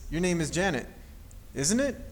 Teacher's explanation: with the rising intonation to check for being correct